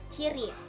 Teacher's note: Ciri-ciri mati, oral, laminopalatal, afrikatif. Contoh katanya ciri.